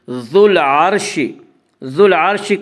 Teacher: عین یا حروف قمری میں سے ہے اور عین سے پہلے الف و لام، اس لیے صرف لام کو پڑھا جائے گا، الف کو نہ پڑھیں گے۔ ذو العرش، ذو العرش کی را کو پر پڑھا جائے گا۔